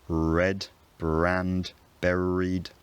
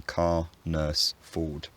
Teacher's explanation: in phonetic terms these are just vowels there's no sound after them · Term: non-rhoticity